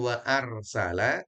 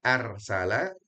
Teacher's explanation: Dan huruf ra-nya tafkhim ataupun tebal. Bukan wa arsala.